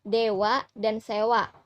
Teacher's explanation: kelas mid setengah tertutup dengan posisi lidah bagian depan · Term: bunyi E